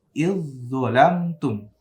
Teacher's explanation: Dibaca iz, langsung masuk ke zo. · Za-nya mati melebur ke zo. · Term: Zo tasydid